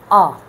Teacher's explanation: तो इसका मखरज जो है अक्साए हल्क है, यानी गले का जो आखिरी हिस्सा है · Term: हमज़ा